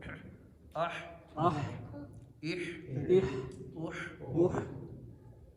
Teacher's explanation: اب اگلا ہے حا، جو حلق کے درمیان سے ادا ہوتا ہے